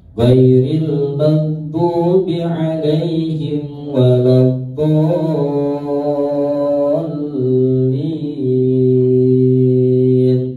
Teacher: Dibaca panjang 5 ketukan, langsung masuk ke huruf lam, kemudian ya dibaca lanjutnya lin, ya dibaca panjang 6 ketukan.